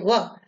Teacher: जब हम व का उच्चारण करते हैं तो जिह्वा दांत को भी स्पर्श करती है और ओष्ठ में भी हरकत होती है वह, इसलिए इसके उच्चारण स्थान दोनों है।